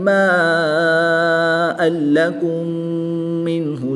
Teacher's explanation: یہاں پر میم ساکن کے بعد دوسری میم ہے تو یہاں پر ادغام شفوی ہوگا، یہاں پر بھی غنہ کر کے پڑھیں گے